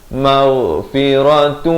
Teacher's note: ghain di hujung kerongkong